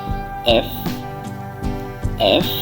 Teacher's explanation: আপনি এফ উচ্চারণ করছেন আপনার উপরের মাড়ির দাঁতগুলো যেন নিচের ঠোঁটের সাথে লাগে এফ এফ উপরের মাড়ির দাঁতগুলো নিচের ঠোঁটের সাথে লাগবে এফ এফ